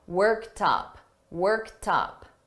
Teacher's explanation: Notice that T, worked. But when I combine it with worked up, I'm going to link these together and you're going to hear that T in front of up.